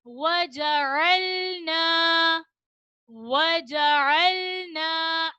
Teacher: वाव को अदा करते हुए मुकम्मल होठ गोल होंगे।